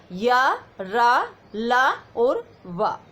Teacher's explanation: जिन व्यंजनों का उच्चारण करते समय जीवा पूरी तरह से मुख के किसी भाग को नहीं छूती वे अंतःस्थ व्यंजन कहलाते हैं। इनका उच्चारण स्वर और व्यंजनों के मध्य का होता है।